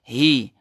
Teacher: Dia bergetar suara, kemudian ada aliran udara lalu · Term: baris bawah hi